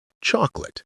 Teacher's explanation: That's native pronunciation. Think of chocolate as chalk plus lit. Chocolate. The middle vowel evaporates. If you find yourself saying three syllables, you're doing it wrong.